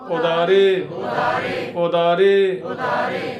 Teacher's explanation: ਉਧਾਰੇ ਨਹੀਂ ਕਹਿਣਾ ਪੋਲਾ ਜਿਹਾ ਸ਼ਬਦ ਬੋਲਣਾ